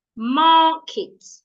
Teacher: Market is a noun and it has 2 syllables, ma and kit. So because market is a noun, I'm going to say the first syllable, ma, louder, longer, and clearer. While the second syllable, kit, I will not say it loud, I will not say it long, I will not say it clear.